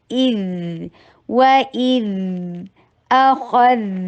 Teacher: و اذ ای کی ساؤنڈ کرنی بہت ضروری ہے اور حمزہ شدید حروف میں سے ہے. ذال کے اوپر ساؤنڈ آنی چاہیے, بریتھ نہیں ہے. اذ کے ساؤنڈ آف فلو ہے, فلو آف ساؤنڈ ہے, ساؤنڈ کلیئر ساؤنڈ.